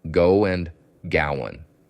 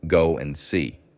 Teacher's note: Go and gowan, and the D drops. So just to confuse you, we add a w and we drop the duh.